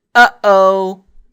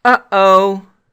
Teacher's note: if we said uh-oh, that sound is the glottal stop